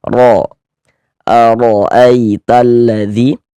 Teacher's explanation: Huruf ro kita baca tebal, kita baca tabkhim karena dia memiliki harakat fathah. Ini tanda baca fathah.